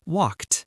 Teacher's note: For walked, it sounds like a t sound at the end, walked.